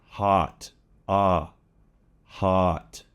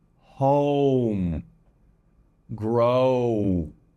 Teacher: The short O has more of an ah sound, hot, ah, hot. It's a bit more wider, hot, but it's still short, as opposed to the long O, as in home, grow. That definitely has a glide on it. You'll see my mouth starts open and closes.